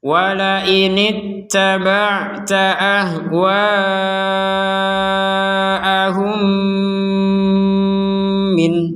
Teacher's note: Jadi mim yang pertama dimasukkan kepada mim yang kedua sehingga terbaca dengan dengungan. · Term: mim sukun